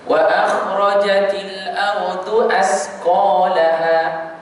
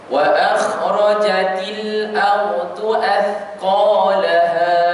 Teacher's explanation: Kita letak lidah kita pada bucu gigi gunting kita belah atas. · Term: huruf tha